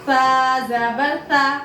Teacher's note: ता में मुस्तफीला की सिफत है और नरमी की सिफत भी है, तो इसको बारीक पढ़ेंगे और नरमी के साथ पढ़ेंगे।